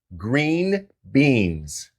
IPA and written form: ɡriːn biːnz (GREEN BEANS)